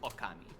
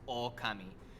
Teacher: the O at the beginning is short in the word for God, and it's long in the word for wolf. And that just means that it's pronounced slightly longer. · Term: vowel length